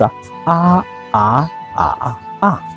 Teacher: Those letters, each one have 4 tones. It's first tone is flat, second tone going up, third tone is curved, last tone going down, So this is and every vowel they have this 4 pronunciation.